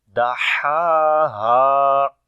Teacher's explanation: And the next is ha, which sound comes from the bottom of the throat, and also we long this ha because there is alif madda.